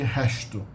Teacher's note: Instead of being a normal S, sibilant sound, S, the S at the end of a syllable in many regions outside, especially in colonial Brazil, which is Rio in the north, tends to be sh, becomes like a shushing sound. So a word like resto, resto.